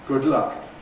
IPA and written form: ˌgʊd ˈlʌk (good luck)